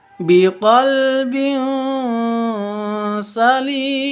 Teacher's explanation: tanwin bertemu dengan sin cara bacanya samar disertai dengung dua ketuk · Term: ikhfa Hakiki